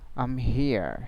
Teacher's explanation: so the final R will not be pronounced except there is a vowel after it in the following word